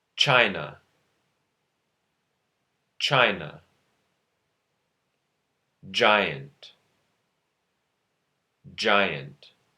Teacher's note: try to feel the combination stop plus fricative when producing the Africates.